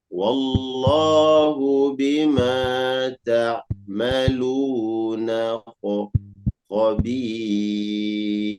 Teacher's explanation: Kurang tebal di kha.